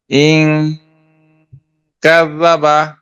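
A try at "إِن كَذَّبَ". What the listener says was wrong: গুন্ডাটা শুনতে পাই না আমরা, বাকিটা শুরুতে বা শেষে শুনতে পাই। ইং কাযাবা, হামজা নুন জের ইং,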